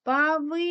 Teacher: другий склад наголошений у слові Павич